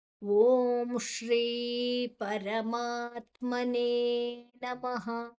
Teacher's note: ನಮಃ ಆದ ನಂತರ ಅಲ್ಲಿ ವಿಸರ್ಗದ ಉಚ್ಚಾರಣೆ ಹ ಒಟ್ಟಿಗೆ